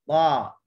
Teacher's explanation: Pangkal lidah terangkat semasa menyebut huruf ta. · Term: isti'la